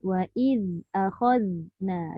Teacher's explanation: Dua zal tu dua-dua je lidah keluar.